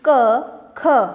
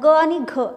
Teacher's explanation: क, ख ही कठोर व्यंजन आहे. बघा त्याचा उच्चार होत असताना थोडासा आपल्याला कठीण वाटतो. आता ग आणि घ आपण सहज म्हणतो म्हणून ते मृदू व्यंजन आहे.